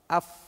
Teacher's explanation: AB huruf wau bibir yang muncung au Fa bibir bawah AF bibir bawah kita tekan gigi atas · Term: huruf Fa